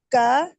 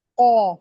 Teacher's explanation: کاف باریک ہوگی اور قوف پور ہوگی، موٹی ہوگی.